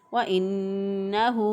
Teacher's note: انہو نون مشدد ہے، نون مشدد پر گنہ کرتے ہیں، تو بعض لوگ اس پر گنہ نہیں کرتے، ایک الف کے برابر ناک میں آواز ٹھہراتے ہوئے ادا نہیں کرتے، تو ہم اس کو پڑھیں گے وَإِنَّهُ۔